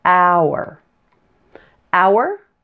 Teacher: and here's one homophone pair that has an our sound and our sound is a blend of ow + ER